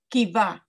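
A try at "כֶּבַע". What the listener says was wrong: Very close. Look at the vowel underneath the kaf. It's two dots like snake eyes. Snake. Keva.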